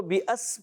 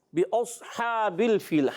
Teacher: بِأَصْحَابِ میں صاد کو پر کر کے پڑھیں گے. بعض بچے اس کو بِأَس پڑھ دیتے ہیں، بِأَس نہیں پڑھنا، بِأَصْحَابِ الْفِيلِ.